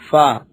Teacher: اوپر کے دانتوں کے کنارے اور نچلے ہونٹ کے تر حصے سے ادا ہوتا ہے